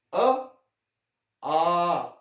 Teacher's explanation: कंठ से। ये ध्वनि हमारे कंठ से निकलती है और मुंह का कोई और फंक्शन नहीं है। अ आ, जीभ का कोई फंक्शन नहीं है, हमारे लिप्स का कोई फंक्शन नहीं है, सिर्फ कंठ का ही फंक्शन है।